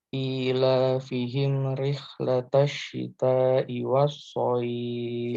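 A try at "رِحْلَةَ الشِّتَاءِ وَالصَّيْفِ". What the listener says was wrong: Kita panjang itu. Nggak boleh dua harokat. Harus lebih panjang dari itu.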